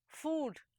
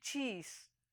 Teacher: when you say food your lips undergo rounding and when you say cheese your lips retract